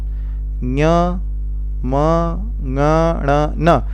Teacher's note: नासिका और मुख से उच्चारित हो रहे हैं। तो कुल 10 वर्ण ऐसे हैं जो नासिका से उच्चारित होते हैं।